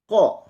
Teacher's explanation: Huruf ko keluar juga dari tenggorokan.